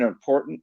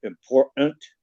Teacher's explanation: if there's a T in the middle of a multisyllabic word, they drop it and they just use a glottal stop now